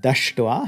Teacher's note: form will be just dash and then we add your thoi the palatal s is going to again jump down to the retroflex pulling the dental t with it